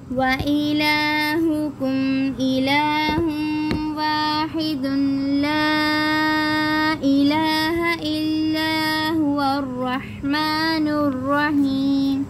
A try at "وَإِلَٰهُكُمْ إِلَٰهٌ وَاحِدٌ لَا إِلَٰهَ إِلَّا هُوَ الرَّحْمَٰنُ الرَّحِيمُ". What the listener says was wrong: अकेला वाहिदुन है। अब हम वक़फ़ नहीं ना करेंगे, तो वक़फ़ करेंगे तो वाहिद, फिर मिलाएंगे तो वाहिदुल्ला इला, दून नहीं, वाह बोलो